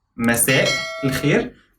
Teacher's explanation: There is a glottal stop in Masa'.